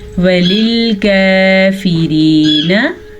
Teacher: काफ बारीक पढ़ेंगे, रा को भी बारीक पढ़ेंगे क्योंकि रा के नीचे ज़ेर है और ये है वाव या मद्दा, सॉरी या साकिन से पहले ज़ेर है तो ये या मद्दा हुआ।